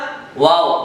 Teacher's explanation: دونوں ہونٹوں کو گول کیجئے، پھر الگ کرتے ہوئے کہیے واو